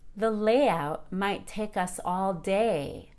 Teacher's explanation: notice how the last word day rises and falls in pitch on the long a